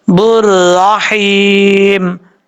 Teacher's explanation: خیال رکھیے گا کہ یہاں پر ایک سے زیادہ را کی آواز نہیں آنی چاہیے، ایسا نہیں ہے ہونا کہ بر، یہ غلط ہے، بر رحیم، اس طریقے سے پڑھنا ہے۔